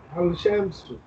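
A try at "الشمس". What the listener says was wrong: Ashamsu, Lam is silent.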